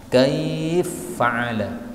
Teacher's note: Nah, ini berarti idgham, fa masuk ke dalam fa.